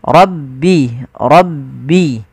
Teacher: lafal rabbi suara ro-nya ditebalkan, ro, rabbi, rabbi.